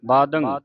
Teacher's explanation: ਜੇ ਟਿੱਪੀ ਹੈ ਉਹ ਨੱਕ ਦੇ ਵਿੱਚ ਉਚਾਰਨ ਹੋਵੇਗੀ